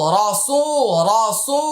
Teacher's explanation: সিন পেশ সু, রসু, রসু। পেশের বাম পাশে জজমালা ওয়াও, এটা মাদের হরফ, এক আলিফ লম্বা করতে হবে।